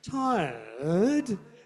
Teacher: you're saying tired with a falling rising pattern